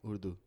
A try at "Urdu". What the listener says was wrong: No, with an R. URDU. Why are you using an L in there? There's no L in there.